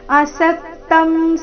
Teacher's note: ಸ ಮೇಲೆ ಆಘಾತ ಅನುಸ್ವಾರದ ಉಚ್ಚಾರಣೆ ವ್ಯಂಜನ ಮ ರೀತಿ